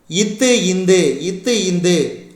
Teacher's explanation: மேல்வாய் பல்லின் அடியை நாக்கின் நுனி பொருந்துவதால் பிறக்கும் மெய்யெழுத்துக்கள்